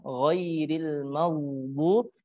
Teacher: Kemudian di sini pada ayat yang ke-7 ini dipertegas kembali huruf ghainnya ditebalkan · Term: isti'la